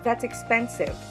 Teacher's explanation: we know that the word expensive is stressed on the second syllable.